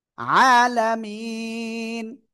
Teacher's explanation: নুন জবর না, আলামিনা। থেমে পড়লে সাকিন, আর তার আগে এক আলিফ মাদ, এই জন্য এই জায়গায় তিন আলিফ টেনে পড়বো।